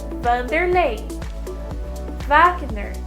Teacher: w doesn't really occur in portuguese words only in foreign words and it takes a v sound